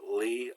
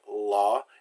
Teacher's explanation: It's always like Li with your tongue against your front upper teeth in French.